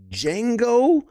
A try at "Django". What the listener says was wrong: You don't pronounce the J in Django.